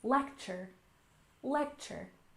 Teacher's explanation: And next we have lecture. Stress the first syllable. Lecture. Lecture.